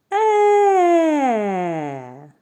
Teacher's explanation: губи розтягнені повітря проходить вільно звук е можна вимовити дуже голосно і проспівати тому він голосний